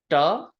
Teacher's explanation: da is very close to a typical English T very close to like a English tea but it's no aspiration this is almost like you're saying the word star when you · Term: retroflex sound